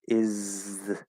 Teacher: we might go from the Z and start pushing the tongue a little bit far forward, to get a little bit of that TH.